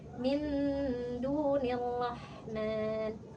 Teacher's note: ha dengan ha sama-sama huruf halqi ya, artinya keluarnya dari tenggorokan. Tapi berbeda nih tempatnya.